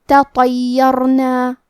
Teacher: تا حروف الترقیق میں سے ہے تو ہم تا کو پتلی آواز میں پڑھیں گے، لیکن طو حروف التفخیم میں سے ہے تو ہم طو کو موٹی آواز میں پڑھیں گے